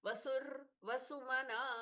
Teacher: आधे र पर पॉज लेना है फिर से वसु फिर से पूरा वसु बोलना है वसुर वसुमना